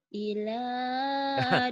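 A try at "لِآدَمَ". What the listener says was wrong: Kalau alif nggak mungkin bisa sambung dengan lam ya. lam dulu. Karena alif itu ingat-ingat ya. Kalau alif di dulu alif itu termasuk huruf egois. Maksudnya huruf egois huruf yang nggak bisa disambung dengan huruf berikutnya.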